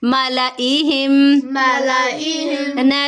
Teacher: اب یہاں پہ پھر ملا نہیں پڑھیں گے بلکہ مالا پڑھیں گے کیونکہ الف گر جائے گا، وہ نہیں پڑھا جائے گا